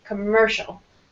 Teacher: the second syllable will be stronger